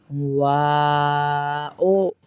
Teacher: واو میں بھی ہونٹ گول ہو جائیں گے